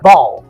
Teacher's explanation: na verdade você fala som de A, você não fala bow